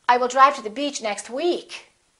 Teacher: you can put a little more extra stress on the word week